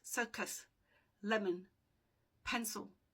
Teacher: So the schwa here is the same as a in about or e in taken, i in pencil, o in lemon, u in circus. So the the vowel is not really stressed.